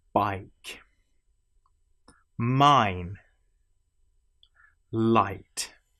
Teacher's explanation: It starts as a and ends in E. I the whole shape of the mouth changes through this. And so essentially you have what feels not like a straight vowel sound but as a curved vowel sound · This sound as you will notice changes. It starts as a and ends in E.